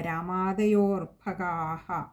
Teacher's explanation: അവിടെ അകാരവും ഉണ്ട് അതുപോലെതന്നെ വിസർഗ്ഗവും ഉണ്ട് അതുകൊണ്ട് പകുതി ഹകാരത്തിൽ വായിച്ചു നിർത്തുകയും വേണ്ടതാണ്